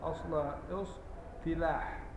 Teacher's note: لما يكون حرف مطبق يبقى التاء بتاعت الافتعال تنقلب الى طاء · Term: حرف الاطباق